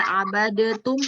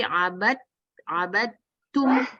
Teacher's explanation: huruf dal ketemu ta itu dalnya tidak dibaca abadetum, bukan abadetum, tapi abadtum, langsung ke ta ya. Abadtum.